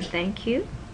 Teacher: interdental, between your teeth, voiceless fricative is th, as in thank you